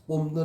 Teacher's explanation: 비읍이 미음으로 바뀌었으니까. 왜냐하면 비읍이 뭐에 영향을 받아? 뒤에 니은의 영향을 받은 거죠. 비음이 니은에 영향을 받아서 니은과 코솔이라는 점이 같은 미음으로 바뀌었기 때문입니다. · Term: 비음화